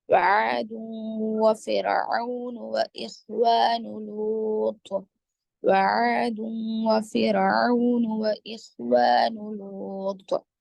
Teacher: را ساکنہ سے پہلے زیر ہے تو را کو باریک پڑھیں گے · تنوین کے بعد واو ہے، یرملون مع الغنہ